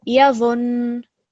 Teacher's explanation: you're not going to prolong the dha, but you're just going to put a bit of emphasis on the noon